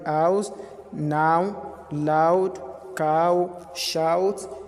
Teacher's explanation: starting on the A sound and finishing on the O sound. Letters and letter combinations, OU, OW.